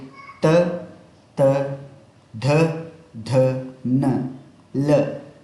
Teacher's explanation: ತ ತ ಧ ಧ ನ ಲ ಈ ವರ್ಣಗಳು ನಾಲಿಗೆ ಬಾಯಿಯ ಹಲ್ಲುಗಳ ಸಹಾಯದಿಂದ ಹಲ್ಲುಗಳಕ್ಕೆ ಒಂದಕ್ಕೊಂದು ಸ್ಪರ್ಶವಾಗಿ ಮೇಲ್ದವಡೆ ಹಲ್ಲು ಮತ್ತು ಕೆಳದವಡೆ ಹಲ್ಲುಗಳು ಅವುಗಳ ಮಧ್ಯೆ ನಾಲಿಗೆ ಬಂದು ಸ್ಪರ್ಶವಾಗಿ ಉಚ್ಚಾರಣೆ ಆಗ್ತವೆ. ಹಾಗಾಗಿ ತ ವರ್ಗವನ್ನು ನಾವು ದಂತವರ್ಣಗಳು ಅಂತೇಳಿ ಕರಿತೀವಿ. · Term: ದಂತ್ಯ ವರ್ಣಗಳು